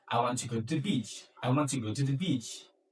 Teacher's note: there's no high pitch coming inside of the sentence. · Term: falling intonation